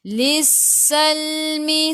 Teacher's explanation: huruf sin sifat hurufnya safir. Kena bunyikan s. Lissalmi. Sal masuk ke dalam lam ada sukun.